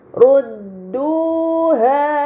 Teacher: sukun begitupun harakat fathah yang bertemu dengan alif ini dinamakan Madi maka harus dibaca panjang selama dua harakat